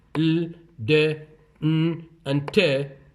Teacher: the tip of the tongue is in contact with the alveolar ridge, and in S and is, the tip of the tongue is, or blade is close to the alveolar ridge, so they are called alveolar.